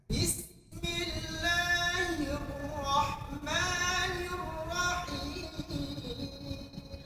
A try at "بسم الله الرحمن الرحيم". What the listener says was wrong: শুধু হায়ের উচ্চারণটা প্র্যাকটিস করুন 500 বার, ঠিক আছে?